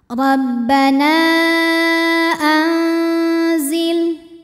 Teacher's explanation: maka cara baca nunnya adalah dipanjangkan boleh empat boleh lima harakat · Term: Mad Jaiz munfasil